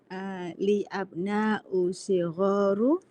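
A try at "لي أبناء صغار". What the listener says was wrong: Li abnaun sigharun. Enggak, bukan sigharu. Li abnaun sigharun.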